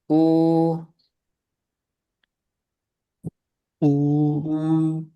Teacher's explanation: U setiap domah seperti itu. Bibirnya itu mencucu.